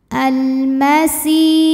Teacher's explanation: alif lam menghadapi huruf qamariah yaitu mim maka lam dibaca jelas almasi si Mad thii ziri karena ada Ya Sukun sebelumnya kasrah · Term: alif lam qamariyah